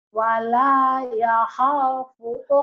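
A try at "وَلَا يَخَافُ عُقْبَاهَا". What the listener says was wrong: Yakhaw. Jangan yakhaw. Kan ada linnya. Wala yakhaw. Jangan yakhaw.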